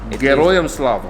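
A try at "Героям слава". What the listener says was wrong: Geroyam Slava. Like not Geroin Slava. Geroy, yes.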